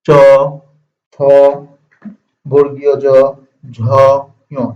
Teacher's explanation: চ, ছ, বর্গীয় জ, ঝ, ঞ এটা কোথা থেকে উচ্চারিত হচ্ছে? দেখো জিহ্বা উঠে কিন্তু তালুতে স্পর্শ করতেছে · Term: তালব্য